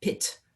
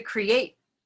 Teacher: the t is more pronounced but in create it's kind of almost omitted